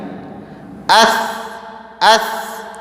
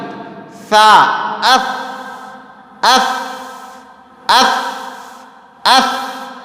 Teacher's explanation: سا کو ادا کرتے ہوئے سیٹی کی آواز بالکل بھی نہیں آنی چاہیے۔ اس بالکل نہیں، غلط ہے یہ۔